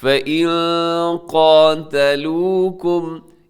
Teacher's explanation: فَإِن قَاتَلُوكُمْ، یہاں نون ساکن ہے اور نون ساکن کے بعد قاف ہے، یہاں بھی اخفا کیجیے گا